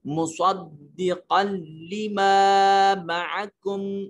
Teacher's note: تنوین کو جب لام اور را سے ملاتے ہیں تو آواز ناک میں نہیں جانی چاہیے. عمومی طور پر چونکہ دو زبر دو زیر دو پیش کو پڑھتے وقت آواز ناک میں جاتی ہے, مگر یہاں ناک میں نہیں لے کے جائیں گے, اس کو ادغام تام بولتے ہیں.